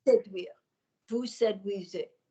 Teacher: Now slide and don't bang, bang, bang. You've got a nice bit of head twang. You've just got a little bit of the throat lingering. So remember to take it above there.